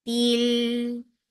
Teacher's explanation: for kasra give e sound and then attach with lam. Lam will get sifa of tawassut.